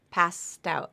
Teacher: Pass out it's actually the St passed out where the T breaks apart breaks away and goes to the beginning of the next word